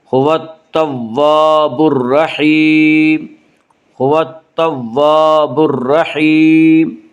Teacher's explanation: را مشدد کے اوپر زبر ہے اس لیے را مشدد کو پر پڑھیں گے · را یا حروف شمسی میں سے ہے، را سے پہلے الف اور لام ہے، اس لیے الف اور لام کو نہ پڑھیں گے بلکہ بعد والے حرف سے ملا کر پڑھیں گے